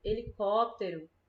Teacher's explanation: A gente pronuncia todas as outras sílabas mais rápido. E có, a gente puxa mais, percebe? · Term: antepenúltima sílaba